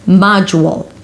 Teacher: And then it's the u as a YUW. MAA-juwl and then a dark L, you can have a little W there before.